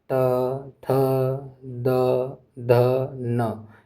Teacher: तो का मतलब हो गया त वर्ग। त, थ, द, ध, न, ये दंत से बोले जाते हैं।